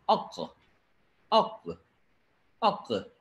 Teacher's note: என்ன சொல்வதென்றால், இந்த 'கா' என்பது கல்கலா; இப்போது கல்கலா என்றால் ஒரு லேசான அதிர்வு, ஒரு சிறிய துள்ளல் இருக்கும் என்று பொருள். இப்போது அந்த 'க'வுக்கு 'அக், அக், அக்'; இது தொண்டையின் ஆழத்தில் வரும் 'கா' என்பதால், நாம் 'அக்' என்று சொல்லும்போது, அதற்குப் பிறகு காற்று வெளியே வருவதில்லை.